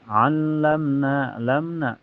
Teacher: Alamna na mad thabi'i karena ada fathah berdiri di na dibaca panjang dua harakat